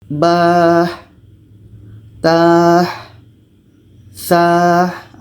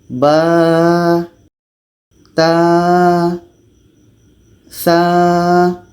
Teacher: Jadi ketika sebut huruf ba ini jangan sampai ada berangin. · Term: jahar, jelas